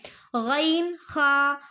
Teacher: غین خا حلق کے منہ کے جانب والے حصے سے غین خا ادا ہوتے ہیں